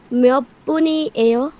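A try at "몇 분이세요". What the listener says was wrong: মিয়ব্বনি সেও। প্রশ্ন করতেছে, একটা গলার টোনটা একটু ডিফারেন্ট হবে।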